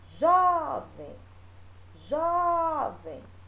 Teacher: A sílaba tônica dela é Jó